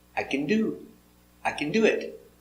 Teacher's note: the action is the more important word not the helper. The action do has the stress.